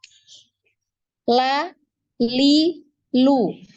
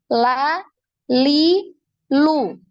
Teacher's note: jadi nempelnya ini digusi ya digusi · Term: huruf lam